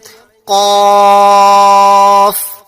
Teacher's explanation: अब यहाँ देखिए, सबसे पहले जो हर्फ है वो काफ है और काफ के मुतालिक हमने आपको बताया कि इसके अंदर सिफत इस्तिला पाई जाती है, यानी ये हरूफ मुस्तालिया में से, इसलिए से हमेशा पुर पढ़ा जाएगा